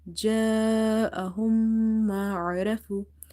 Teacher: Alif is madda, that's why we have stretched this sound.